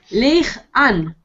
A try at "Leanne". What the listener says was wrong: No, it's not Leigh.